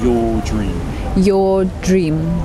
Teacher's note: And there's no R sound on the your. in British English.